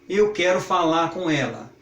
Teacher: Ficou um R quase sumido ali, quase como se tivesse um A acentuado.